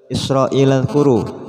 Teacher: Di sini dzal, ingat dzal tidak termasuk huruf qalqalah, jangan sampai dipantulkan